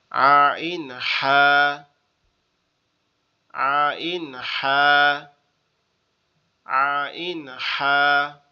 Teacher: দ্বিতীয় নাম্বার মাখরাজ হচ্ছে কণ্ঠনালীর মধ্যখান হইতে আইন হা, গলাটা একটু বসা হবে, চাপা চাপা মতো।